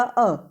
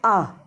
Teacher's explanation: किसी भी स्वर की एक मात्रा ह्रस्व कहलाती है। जैसे हमने बोला अ, यदि हम इसे दीर्घ बोलेंगे तो बोलेंगे आ, तो इसमें अ आ, तो ये 2 मात्राएं हो गई।